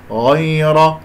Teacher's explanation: غين مفخمة مرتبة ثانية مفتوح، والراء مفخمة لأنها مفتوحة